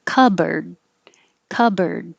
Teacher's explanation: say cupboard so you don't think about the p at all you just close your lips cup and then you make the b and instead of bored it's reduced down to just er